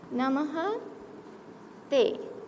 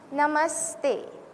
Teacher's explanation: how is it that the Visarga changes into a sa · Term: Visarga sandhi